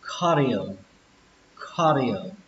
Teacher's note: Còn cái từ này trọng âm của nó sẽ là âm đầu tiên, âm khờ. Mặc dù nó ghi là âm C này nhưng chúng ta sẽ đọc là âm khờ, khờ.